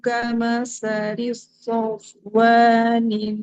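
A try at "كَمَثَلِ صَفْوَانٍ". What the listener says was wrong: kama, jangan kama salis so. Nanti shotnya seperti bertasydid. Kama salis sofwanin alaihi. Jadi shotnya jangan ditekan Ibu.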